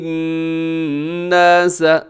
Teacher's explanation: الناس نون مشدد ہے تو یہاں غنہ کیجیے گا